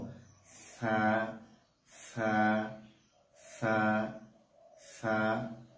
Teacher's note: জিহ্বার আগা উপরে দাঁতের সঙ্গে, সামনের দাঁতের সঙ্গে আমরা লাগিয়ে দেব সা, এবং এটাকে নরম ভাবে আদায় করব।